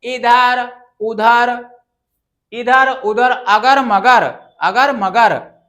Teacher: केवल मुंह से बोले जाने वर्ण या ध्वनि को निरनुनासिक कहते हैं।